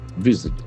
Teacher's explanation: That letter s was a z sound.